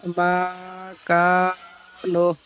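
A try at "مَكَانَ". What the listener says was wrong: আরেকটু টান হবে, আরেকবার পড়েন। জি। মা কানা টানটা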